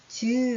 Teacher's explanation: 즈 하는 소리 있죠? 즈 하는 건 혓바닥이 전체가 이렇게 붙었다 입천장에 떨어지면서 나는 소리라고 할 수 있죠. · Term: 센 입천장 소리